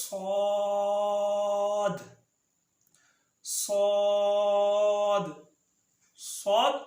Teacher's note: صاد صاد ادا ہوتا ہے زبان کی نوک اور اوپر نیچے دونوں دانت